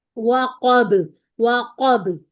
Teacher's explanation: واؤ پتلا ہے، قاف موٹا ہے، با پتلا ہے